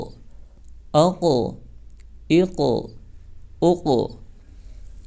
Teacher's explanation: قاف حروف مستعلیہ میں سے ہے اس لیے موٹا ہوگا، اور قلقلہ میں سے بھی ہے اس لیے اس کی ادائیگی میں زبان اپنے مخرج پر لگ کر اچھل جائے گی، جیسے حمزہ قاف زبر اق، حمزہ قاف زیر اق، حمزہ قاف پیش اق، اق اق اق۔